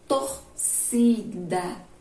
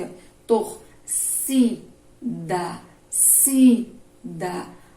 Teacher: a penúltima sílaba, a penúltima é a mais forte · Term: paroxítona